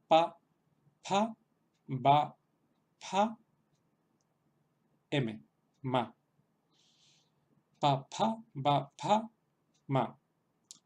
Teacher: Entonces, esta serie también nos resultará bastante familiar porque también existe un equivalente exacto en castellano, la única diferencia de que también existen versiones aspiradas y bueno, tenemos las dos consonantes sordas, una sin aspiración, otra con aspiración, las dos consonantes sonoras, una sin aspiración, la otra con aspiración y la consonante nasal. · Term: serie labial